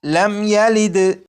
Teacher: میم ساکن ہے، میم ساکن کے بعد یہاں پر یا ہے، جب میم ساکن کے بعد یا ہے تو اس میم ساکن میں بھی غنہ نہیں کریں گے اور اسے پڑھیں گے لم یلد۔ تو یہاں پر یہ جو